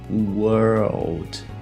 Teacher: a gente tem aqui basicamente esse som de R, o R retroflexo, o L e o D mudo